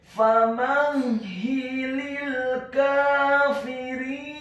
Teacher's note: huruf ha-nya dibaca tafkhim tebal, ditasydidkan, ditekankan, kasrah 1 harokat. Kemudian huruf lam yang pertama dibaca tipis, tarqiq, kasrah, cukup 1 harokat saja karena setelahnya langsung disambung huruf lam yang sukun.